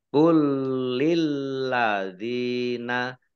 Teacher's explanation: Jadi lamnya dibaca double, ada dua lam yang kedua juga dibaca double.